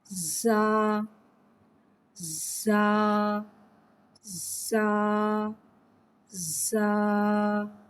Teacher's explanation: زا میں سیٹی کو ظاہر کر کے پڑھیں گے۔ زا حرف سفریہ ہے، زبان کی نوک اور دونوں دانتوں کے اندرونی کنارے سے ادا ہوتا ہے۔